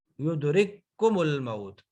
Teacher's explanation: آگے کاف کا کاف میں، تو اب یہ ہے یدرککم الموت، یدرککم الموت، نو، یدرککم الموت، پہلا ساکن دوسرا متحرک، تو پہلے کو دوسرے میں مرج کر دیا، داخل کر دیا۔ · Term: ادغام مثلین